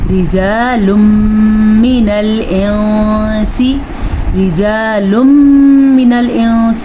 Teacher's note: رجال من میں ادغام بالغنہ اور انسی میں اخفاء کا قاعدہ ہے. نون کو چھپا کے پڑھنا ہے.